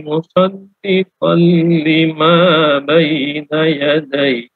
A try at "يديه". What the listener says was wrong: Yadayhi agak panjang ya. Yadayhi.